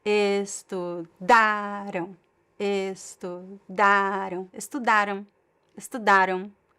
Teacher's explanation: pay attention to the stress is in the syllable, in the middle syllable, the second to last.